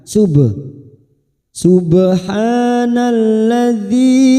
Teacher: huruf ba sukun namanya Qalqalah sugro Karena Mati asli di tengah kalimat kita pantulkan